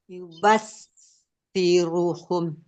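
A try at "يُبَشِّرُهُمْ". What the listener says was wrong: Shinnya kurang menyebar. Yubashi.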